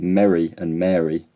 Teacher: to a word so in my accent mary and mary are only different because of the length of time i say the vowel